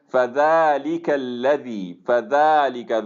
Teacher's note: ذال کے اوپر کھڑی فتحہ ہے اور اس کو ہم لمبا کریں گے ایک الف کے برابر